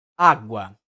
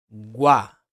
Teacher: uma semivogal e depois uma vogal nós temos um ditongo crescente o som começa menos intenso sofre uma elevação na tonalidade vai para o som mais forte